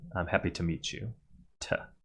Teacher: And finally to becomes ta as in “I’m happy to meet you.” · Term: weak form